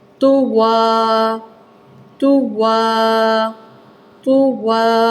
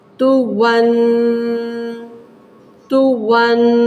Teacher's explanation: اگلا حرف ہے یہاں پہ تو پیش تو، واو دو زبر ون، سادہ، لیکن تنوین آ گئی ہے۔ تنوین کی صورت میں تو ون، غنے کو ناک کے اندر 2 سیکنڈ رکھا جائے۔ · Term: غنہ